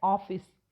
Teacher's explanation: ये जो ऊपर चंद्र बिंदु जैसा लगा है, ये अ की ध्वनि है, आ और ओ के बीच का स्वर है